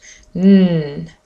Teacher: actually my tongue touches just um behind my teeth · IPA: /n/